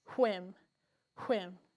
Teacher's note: I feel the strong burst of air. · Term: the digraph